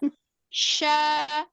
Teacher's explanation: ada di tengah lidah bukan di bibir ya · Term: syin